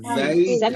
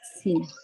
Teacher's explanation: Zai ada suara. Yang membedakan suara desiran mereka. So Sin tak ada suara. Baca jumpa huruf Sin dia senyap.